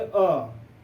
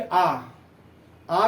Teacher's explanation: जैसे हम कहेंगे अ, बहुत आसानी से बोल रहे हैं, लेकिन हम कहेंगे आ कहने में हमको समय भी लग रहा है और हमको बल देना पड़ रहा है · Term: दीर्घ स्वर